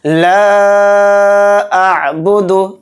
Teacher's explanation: قل یا ایہا الکافرون لا اعبد ما تعبدون، لام کے ساتھ الف مدہ ہے، الف مدہ کے بعد حمزہ دوسرے کلمے مارا الف کی شکل میں، تو اس میں مد منفصل کا قاعدہ ہو رہا ہے، یعنی کہ جو لام کے اوپر مد ہے مد منفصل ہے، اس کو 3 الف کی مقدار کھینچ کر پڑھیں گے۔ لا اعبد، اتنا ہم اس کو کھینچیں گے۔